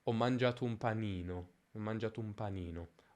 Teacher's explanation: la vocale i in panino si allunga in maniera prominente. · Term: accento di frase